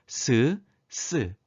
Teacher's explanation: 혀 끝과 윗 잇몸 사이를 좁혀서 그 사이에 공기가 강하게 흘러가며 나는 소리입니다 쓰 쓰 이렇게 좁혀진 발음 기간 사이를 공기가 마찰 시키며 내는 · 좁혀진 발음기관 사이를 공기가 마찰시키며 내는 소리라 하여 마찰음이라고 합니다. 그래서 잇몸 소리 스, 스가 있고요.